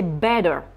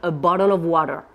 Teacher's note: en anglais américain le T ou le double t se transforme en D